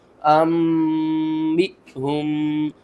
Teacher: یہاں پر ہم نے حمزہ کو ساکن کیا ہے تو جھٹکے کے ساتھ پڑھیں گے